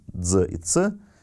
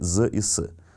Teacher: африкаты, то есть звуки «дз» и «ц», перешли в свистящие «з» и «с»